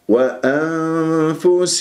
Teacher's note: باطن الشفا من غير اطباق للشفاه فرجه في الشفاه حتى لا تخنق الغنه